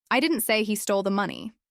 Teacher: Now, depending on which word you stress, the meaning changes. Stress I and it implies someone else said it.